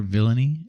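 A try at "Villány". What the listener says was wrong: Vilan is how you say it. Vilan. The Y is silent in Hungarian. Vilan.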